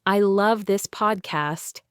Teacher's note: saying love more strongly shows your strong feeling.